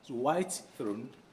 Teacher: you cannot fully realize white before the word throne comes in and so what do you do you drop the t is